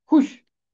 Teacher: خے ملے گا آ کے شین کے ساتھ، یہ واو مادولہ ہے، یہاں واو کی آواز خاموش رہے گی۔